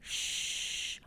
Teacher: So for example, the SH, shh, our teeth is causing some friction, and just a little bit of air is able to sneak through